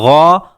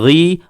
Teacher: غین بھی آخر حلق سے ادا ہوتا ہے۔